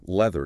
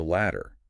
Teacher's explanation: The th sound in leather is a vibration right on the teeth, whereas the double d in ladder bounces off the roof of the mouth.